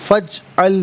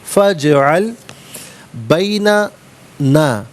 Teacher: جیم حرف قلقلہ ہے تو آواز لوٹتی بھی محسوس ہونی چاہیے